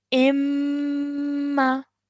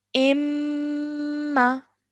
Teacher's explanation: To join these 2 letters together, I would say imma. I'm holding the mim sound in my nose before letting it go to produce the fatha sound. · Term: mim mushaddad